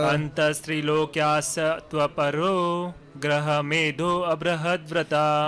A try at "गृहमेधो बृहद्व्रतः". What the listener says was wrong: देखिए अ नहीं बोलना है, गृहमेधो बृहद्व्रतः। जो धो है उसको जोर से बोलना है, थोड़ा बढ़ा कर बोलना है, तो वो आ नहीं बोला जाएगा यहाँ पे। गृहमेधो बृहद्व्रतः,